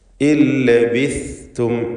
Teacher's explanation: നാവിൻ്റെ അറ്റത്തിൻ്റെ മുകളും മേൽ മുൻപല്ലിൻ്റെ അറ്റവും, ഇതാണ് സാഇൻ്റെ മഖ്റജ്. ഇല്ലബിസ്തും, അത് സീന് പോലെ ആയി പോകരുത്.